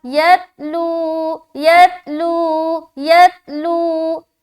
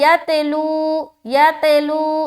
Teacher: या को जब ता से मिलाए तो ता में कलकला नहीं होना चाहिए। तो हम क्या पढ़ेंगे यहाँ पर?